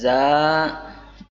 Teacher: Nah, za dibaca dengan cara menyentuhkan ujung lidah pada dua gigi seri bagian atas, za, dan bawah. Suaranya mengalir karena memiliki sifat al-izlaq, namun napas tidak mengalir karena memiliki sifat al-jahr